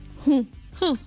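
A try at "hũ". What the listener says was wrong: Eso, que suene más la U. La U, que salga el sonido por la nariz. Eso, algo así como esa queja. Como esa queja.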